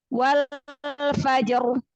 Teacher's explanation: ro sukunnya dibaca tafkhim, dibaca tebal.